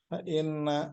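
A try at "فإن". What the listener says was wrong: fa'in fa'in kalau ada fiil pakainya in nggak pakai inna. Kalau in in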